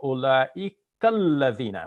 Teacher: the A has been dropped, and we're going to use the A from the previous word